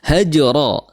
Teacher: haj di situ jim memiliki sifat qalqalah, memantul